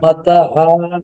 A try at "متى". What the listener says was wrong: মাতা না মাতা এখানে কিছু মার আছে মাতা এই যে দেখেন রং দেখতে পাচ্ছেন না বেগুনি রং মাতা মাতা আদা